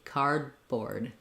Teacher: These D's, again, are unreleased. So I go up to close my tongue off for the D, card, but then I just release into the B